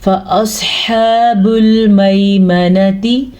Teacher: سواد کو پر پڑھنا ہے کیونکہ سواد حروف مستعلیہ میں سے ہے. ہا کے مخرج کا خاص خیال رکھنا ہے کیونکہ ہا حلق کے درمیان والے حصے سے نکلتا ہے